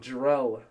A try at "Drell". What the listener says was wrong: It's not drill. It's not drill.